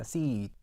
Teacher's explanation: 입이 가장 덜 벌어지고요. 혀 몸이 가장 높게 위치한다.